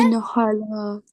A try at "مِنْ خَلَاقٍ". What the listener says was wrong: من بھی نہیں کہنا نا، من بغیر جھٹکے کے، من خلاق.